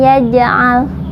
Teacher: Kalau di tengah kalimat itu qalqalah sugro karena huruf qalqalahnya sukun asli ya. Jadi dibacanya mantul tapi kecil. Qalqalah itu mantul, sugro itu kecil.